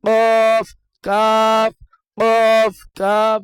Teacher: কফের উচ্চারণ মোটা হবে, পুর হবে। কাফ, কাফের উচ্চারণ বারিক বা পাতলা হবে।